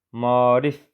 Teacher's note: Onun tələffüzü olacaq maarif formasında yenə A-nın biri düşüb, digəri uzanacaq. E səsi artırılmır.